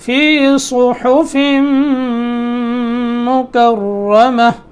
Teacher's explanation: فی صحف مکرمہ، صاد موٹا حرف، فی صحف مکرمہ. را کو موٹا کرنا ہے، را کے اوپر زبر ہے